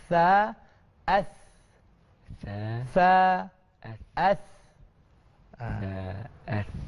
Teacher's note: lidah kita ni terjelang sikit keluar dia di hujung gigi depan kita ni, ya. Sa, kita tak boleh belakang. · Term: huruf sa